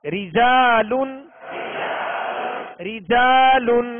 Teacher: اس را کے نیچے بھی زیر ہے، لہذا اس را کو باریک پڑھیں گے